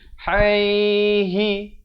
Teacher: Ha pedas di tengah kerongkong ini.